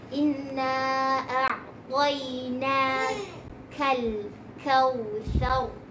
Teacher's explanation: Kaf dia berangin, ra dia tebal.